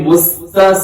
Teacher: مستا سین میں سیٹی ہوتی ہے، مستا کو باریک پڑھا جاتا ہے اور قاف موٹا پڑھا جاتا ہے۔